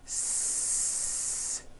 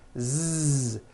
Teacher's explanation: So S has no voicing. S. Z has voicing. Z. So we say the S sound and the Z sound are also paired consonants.